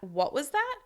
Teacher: Raising from low to high to show the person you need them to repeat themselves. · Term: questioning intonation